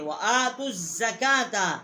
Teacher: وآتوا الزکاۃ، حمزہ جو ہے اس کے اوپر کھڑی زبر ہے، ایک الف جتنا آواز یہاں بلند کی ہے، تا جو ہے اس کو ہم نے زا کے ساتھ جو ہے وہ مشدد کیا ہے